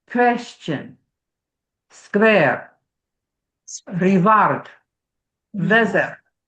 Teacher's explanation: there is no w phoneme in Russian accents most of the time. Most you substitute a V.